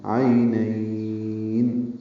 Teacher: عینین یہاں پہ دو لین ہیں، عین یا لین، پھر نئی یا لین. پہلی کو 1.5 حرکت لمبا کریں گے، دوسری کو زیادہ لمبا کریں گے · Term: لین عارض للسکون